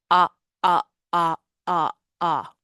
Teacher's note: The first way is called the hard glottal attack, and that's when the vocal folds are squeezed together and abruptly release to create a sudden and often sharp onset